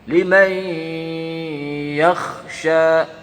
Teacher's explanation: apabila huruf nun sukun bertemu dengan huruf ya, maka dibacanya panjang. Langsung ke huruf ya, syiddahnya langsung nempel ke huruf ya. Namanya idgham bi gunnah.